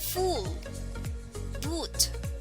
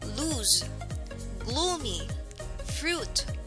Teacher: mouth the jaw is closed and the teeth do not touch the long u sound is considered as a tense vowel